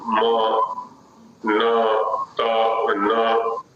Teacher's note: त विशुद्ध दंत्य है, न दंत के साथ साथ नासिका भी, म, प विशुद्ध ओष्ठ्य है, म ओष्ठ के साथ साथ जो है नासिका भी।